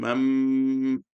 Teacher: So the noon sakin will change into mim and do gunnah.